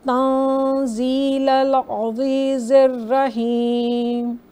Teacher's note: यहाँ पर नून सकून इख्फ़ा का रूल अप्लाई होगा क्योंकि नून सकून के बाद ज़ा है जो कि इख्फ़ा लेटर है। तन इसको तंज़ीलल नहीं पढ़ेंगे बल्कि थोड़ा सा नेज़ल।